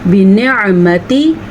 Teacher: बिनिअमति आइन की आवाज़ भी निकालनी है और ता को लंबा भी नहीं करना।